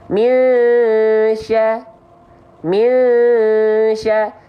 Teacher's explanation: Ada gunnahnya, tahan 2 harokat gunnah